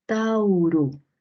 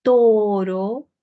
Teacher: Hay un cambio de dos vocales a uno, monoptongación.